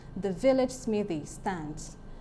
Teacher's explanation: You'll notice that in this line, the is unstressed. Vil is stressed. Lidge is unstressed. Smith is stressed. The Y in smithy is unstressed.